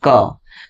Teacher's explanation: क बोलते हैं ना तो क के साथ लग रहा है हल्का अ बोला जा रहा है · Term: व्यंजन